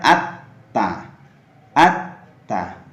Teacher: maka lam sukun pada kata tersebut tidak dibaca, tapi dimasukkan kepada huruf setelahnya, yaitu huruf ta tadi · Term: idgham